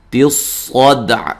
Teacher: صاد کو موٹا ادا کریں گے، دال پہ قلقلہ کریں گے، اور وقف کی صورت میں عین کو بھی ساکن کر کے عین کی آواز بھی آنی چاہیے، ٹھیک ہے.